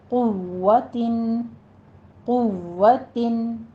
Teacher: क़ुव्वतिन नहीं कहना है, बीच में हमस नहीं आनी चाहिए। क़ुव्वतिन, क़ुव्वतिन, तनवीन का कायदा आगे आ रहा है, इजहार हल्की करेंगे और आगे इख्फा हकीकी होगा।